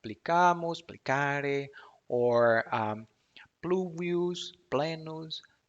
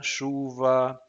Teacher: those words that in Latin have the pl cluster, like plicamos, plicare, or pluvius, plenus, they came down the years into Portuguese with a sh sound.